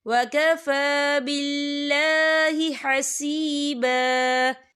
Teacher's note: یہاں پہ اللہ کا نام باریک پڑھا جائے گا کیونکہ اللہ کے نام سے پہلے زیر ہے.